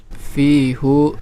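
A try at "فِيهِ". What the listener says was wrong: Fihi ya, baru dijelaskan tadi ya. Hu itu kalau sebelumnya apa tadi? Fathah dan dhammah. Ya, adapun kalau sebelumnya ya sukun ataupun kasroh maka dibaca fihi.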